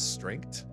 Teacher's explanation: The TH sound is like not used in a West African accent.